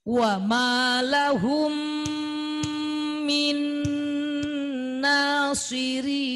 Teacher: Mim ketemu mim. Idgham mimi, idgham mutamatsilan. Sama dengungnya 2 ketukan.